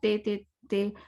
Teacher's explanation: Tip of the tongue ऊपर touch होती है, छोटा सी टिप, और छोटा सा ऊपर का एक टंग वो टच होता है।